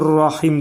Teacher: ra hərfi burada yenə qalın oxunur